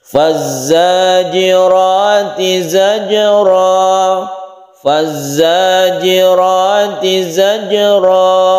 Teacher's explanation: Kemudian ro yang berfathah itu disebut ro tafkhim atau tebal. Zajra ada qalqalah yang karena ada di tengah disebut qalqalah sughra.